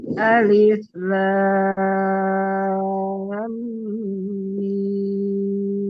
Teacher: mimnya waktu idgham itu harus dibaca dua harokat gunahnya tadi kurang